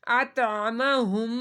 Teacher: میم مشدد ہے تو میم مشدد پہ ہم نے غنہ کرنا ہے۔ جس میم کے اوپر یہ چھوٹی سی علامت ڈبلیو کی آ جاتی ہے تو وہاں پر ناک میں آواز لے کر جاتے ہیں، تھوڑی دیر کے لیے آواز کو چھپا کر پڑھا جاتا ہے۔